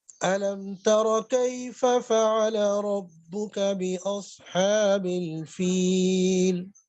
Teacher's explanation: اچھا جی، اس میں علم تارا، تا باریک ہے، را موٹا ہے · تا اور کاف دونوں باریک، درمیان میں را موٹا آ رہا ہے